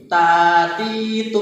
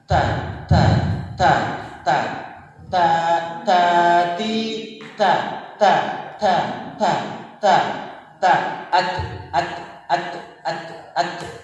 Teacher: huruf ta itu ada sifat hamasnya Hamas itu desisan ada desisan jadi seakan-akan ee ada suara yang itu keluar Jadi kalau tidak